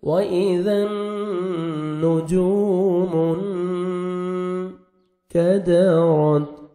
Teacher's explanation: نون ساکن کے بعد حروف اخفاء میں سے کاف آ رہا ہے تو یہاں پہ آپ نوز میں ساؤنڈ لے کے جائیں گے، اخفاء کریں گے